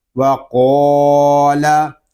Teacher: قاف کو پر پڑھیں گے اور لام کو ہم باریک پڑھیں گے کہ اللہ پاک کے لام کے علاوہ باقی تمام لام جو ہیں ان کو ہم باریک پڑھتے ہیں۔